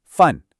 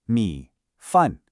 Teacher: The second character, fun, is a fourth tone. Think of it as a sharp, decisive drop, like you're giving a command.